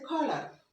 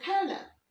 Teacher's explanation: আমেরিকানরা এই আর এর উচ্চারণটা পুরোপুরি করছে কালার, কিন্তু ব্রিটিশরা বলছে কালার, আরটাকে হালকা করে নিচ্ছে